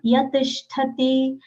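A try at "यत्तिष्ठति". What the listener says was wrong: Double yat tishtati.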